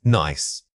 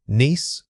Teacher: the first word uses a short quick vowel sound, while the second requires you to hold that e sound longer and spread your lips more widely.